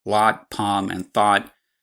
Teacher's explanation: I could confidently pronounce all three sets LOT, PALM, and THOUGHT with the same exact vowel